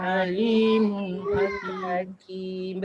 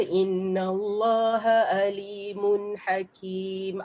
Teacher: Bila orang ngaji, dia tak tekankan bunyi ain, dia akan terbunyi dengan hamzah.